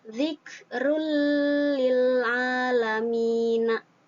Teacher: Zikrul lil alamina, dimasukkan langsung, tanwinnya tidak dibaca tapi langsung dimasukkan ke dalam lam tanpa harus didengungkan